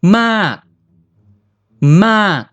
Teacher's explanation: Low class, dead long, falling tone.